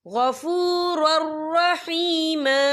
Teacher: یا دیکھیں غفور، را کے پر تنوین ہے، تنوین کے بعد جو ہے را آ رہا ہے اور را جو ہے حروف یرملون میں سے ہے، تو یہاں پر ادغام ہوگا، تو ہم اسے بنا غننے کے پڑھیں گے